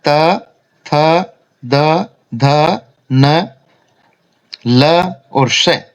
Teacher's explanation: इनका उच्चारण दांतों से होता है। जिह्वा दांतों से स्पर्श करती है, इसलिए इनको दंत्याः वर्ण बोलते हैं।